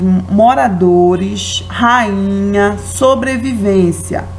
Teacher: Temos a sílaba mais forte, né, a sílaba tônica, na penúltima sílaba